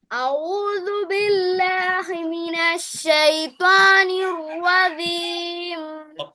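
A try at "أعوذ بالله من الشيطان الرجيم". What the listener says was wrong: তোমার আউযুবিল্লাহ পুরোটা হয়, শুধু লাস্টের রজিম যে শব্দটা আছে ওইটার জিম অক্ষরটা হয় না, ঠিক আছে? জিম অক্ষরটা তোমার ঠিক করলে এটা ঠিক হয়ে যাবে ইনশাল্লাহ।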